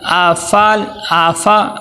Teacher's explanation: حمزہ کو عین نہیں بنانا، حمزہ کو عین نہیں بنانا